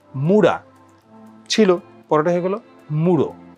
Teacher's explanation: আগে উ থাকলে পরে ও হয়ে যাচ্ছে